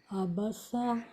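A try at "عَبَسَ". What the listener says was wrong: عین کو صحیح سے ادا کریں. عین کی آواز حلق سے.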